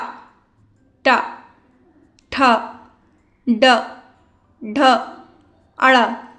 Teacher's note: जो ट वर्ग होता है वो होते हैं मूर्धा को टच कर